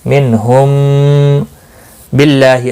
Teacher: اللہ کا لام باریک پڑھا جائے گا زیر کی وجہ سے، اس کے اوپر کھڑی زبر بھی ہے، ایک الف کے برابر کھینچ کر پڑھیں گے.